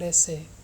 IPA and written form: ˈes.eɪ (essay)